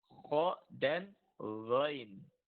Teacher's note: tenggorokan yang dekat di pangkal lidah itu, di situ tempat keluarnya 2 huruf juga, yaitu kho dan ghain